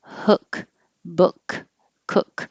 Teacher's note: your tongue's a little bit lower in the back and your lips are not rounded